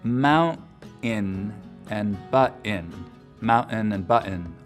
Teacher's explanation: You'll also hear mount-in and butt-in, mountain and button, a lot in Utah, especially among younger speakers with just a pure glottal stop for that T sound in the middle of the word